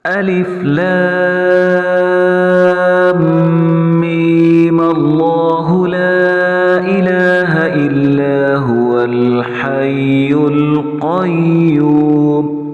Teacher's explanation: ہم میم کے اوپر غنہ بھی نہ کریں اور میم پر مد بھی نہ کریں، اور میم کے زبر کو ہم لفظ اللہ کے ساتھ ملا کر سیدھا سمپل سا پڑھتے جائیں